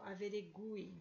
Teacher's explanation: Na palavra averigue, o U é pronunciado e tônico